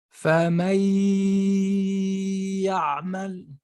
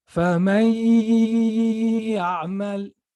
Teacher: It has to come out from the nose. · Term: ghunna